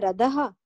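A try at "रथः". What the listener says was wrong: Rathaha. Tha, it is dental. Tha. Mahaprana. Rathaha.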